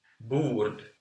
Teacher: In Swedish, this O is pronounced as long U.